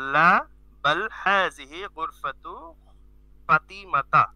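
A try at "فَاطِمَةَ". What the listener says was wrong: ফা টান হবে, ফাতিমাতা।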